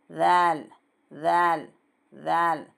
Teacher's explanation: एक चावल के दाना जितनी ज़बान ऊपर के दांतों के थोड़ा सा बाहर निकालना। ऐसा जब हम ऊपर के दांतों को टच करेंगे, एक चावल के दाने जितनी ज़बान, तो दांतों के सांध में से हवा पास होगी, तब इसका सही आवाज़ निकलेगी। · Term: हुर्फ़ लसविया